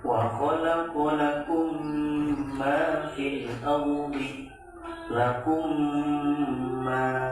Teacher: Maka idgham mithlain di sini adalah ketika mim sukun bertemu dengan mim lagi. Cara membacanya adalah dengan membaca mim sukun disertai gunah yang ditahan 2-3 harokat.